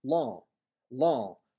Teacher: with the nasal vowel where the mha disappears but leaves the nasality law law which is different certainly for the older less english-sized